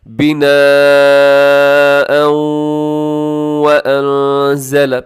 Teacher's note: یہاں پر آپ ادغام کریں گے کیونکہ بناء میں تنوین ہے، تنوین کے بعد واو ہے